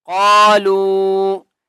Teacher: اور قاف کو ایک الف کی مقدار کھینچ کر پڑھیں گے لام واو مد پیش لو چھوٹی مد ہے 3 الف کی مقدار کھینچ کر پڑھیں گے